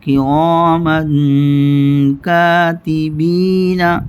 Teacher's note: تنوین کے بعد کاف اخفاء حقیقی کے 15 حروفوں میں سے آیا ہے۔ یہاں من کو غنہ کر کے پڑھیں گے، یعنی من کی آواز ناک میں لے جائیں گے، ناک میں چھپائیں گے